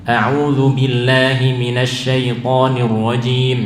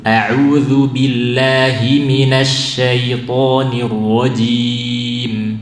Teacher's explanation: audzubillahiminasyaitonirojim Misalnya ini kita hindari ya Ucapkan dari mulut [Musik] audzubillahiminasyaitonirrajin dari al-jauff dari rongga mulut rongga tenggorokan jangan melalui rongga hidung